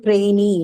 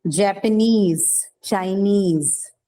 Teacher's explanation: all of these suffixes they take the stress on themselves so this has got nothing to do with what goes before